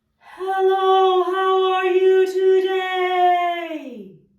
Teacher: And I'm going to start out by really chanting it on the breath. So it will be fairly monotone, extremely breathy, and extremely legato. I'll begin with that same low breath.